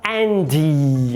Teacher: Ele coloca um izinho ali porque tá adaptando o inglês à fonologia do português. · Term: vogal epentética